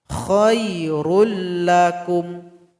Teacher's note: Lam idgham bila ghunah. Maka dilebur tanpa dengung. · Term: idgham bila gunna